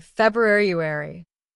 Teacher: many people drop the first R and say February